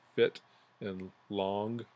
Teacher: syllable is pronounced at a lower pitch than the other so the i in fit has a higher pitch than the O and long · the I in fit does not take as long to pronounce as the O in long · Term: musical pitch